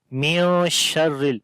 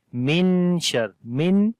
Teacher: نون کی آواز کو ناک کے اندر چھپا کر پڑھیں گے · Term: اخفا